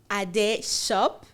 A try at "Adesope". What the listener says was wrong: You pronounced my name very well, so you didn't have to be that slow. You say Adesope, you have to say it together, but you didn't want to get it wrong.